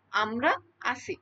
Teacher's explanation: তো আমরা আছি যখন আমরা বলতেছি তখন আমরাটা কিন্তু জোরে হচ্ছে। আর আছিটা কিন্তু একটু আস্তে হচ্ছে। এর স্পিড কিন্তু একই রকম না। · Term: শাসাঘাত